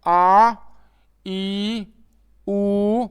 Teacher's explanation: ह्रस्व स्वर से दुगना अर्थात 2 मात्राओं का समय लगता है। तो इसमें 2 मात्राएं होती है तो इसको द्विमात्रिक भी कहते हैं, और इसका समय है जो 2 मात्राओं के बराबर लगता है, इसलिए इन्हें दीर्घ स्वर कहते हैं।